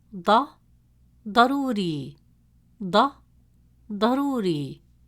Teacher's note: It is a deep sound, pronounced from deeper in the mouth, with more emphasis and stress on the tongue, pushed with more force from the back of the mouth.